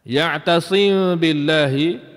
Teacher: kita tidak masuk atas huruf ba tapi kita dengung atas huruf mim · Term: ikhfa syafawi